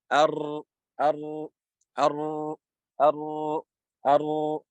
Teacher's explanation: The partial flow of the sound when pronouncing the ra due to the interception of most of the tip of the tongue to its release. So the tip of the tongue intercepts the ra, and the sound comes out the tip.